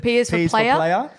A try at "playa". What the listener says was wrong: It's also PLAYA, not ER.